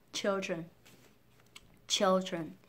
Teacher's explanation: trọng âm chính rơi vào âm tiết đầu tiên các bạn cứ nhấn mạnh vào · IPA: /'t∫ɪldrən/